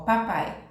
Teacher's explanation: letra a vogal é mais forte semivogal é mais fraco então é decrescente